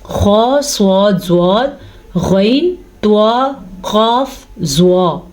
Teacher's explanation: 7 ایسے حروف ہیں جو ہمیشہ ہمیشہ ہمیشہ موٹے پڑھے جاتے ہیں